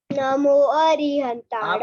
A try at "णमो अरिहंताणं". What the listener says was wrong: आपने सबसे पहले ही गलत कर रहे हो, नमो बोल रहे हो, नमो नहीं है णमो।